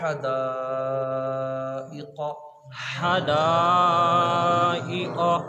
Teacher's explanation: حدا حدا حدائق، قاف موٹا ہے تو اس کو موٹا ہی پڑھنا ہے، زبان کی جڑ اور تالو کے نرم حصے سے قاف ادا ہوگا اور موٹی آواز پر نکلے گا، کیونکہ قاف حروف مستعلیہ ہے جن حروف کو ہمیشہ پر پڑھا جاتا ہے۔